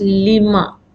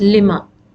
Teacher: whenever a questioning tool is added with harf jar, the alif, this long vowel alif, is deleted. It drops. So it becomes lima.